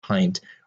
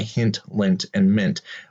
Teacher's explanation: Now you'll notice, and again, I'm not going to emphasize this so much for this lecture, but looking forward, it will be an important point that the I in pint here is pronounced with that long I sound, pint, whereas each of these are short I, hint, lint, and mint